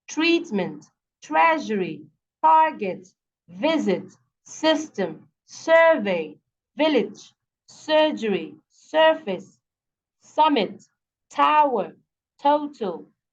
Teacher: the beginning syllable is where the stress is